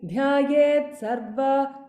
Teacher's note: Even if you do it very slowly, dhyayet sarva, there is a there's a little bit of an aspiration that is heard.